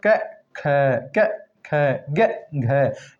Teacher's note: क में कम लग रहा है ख में ज्यादा समय लग रहा है ग में कम और घ में ज्यादा लग रहा है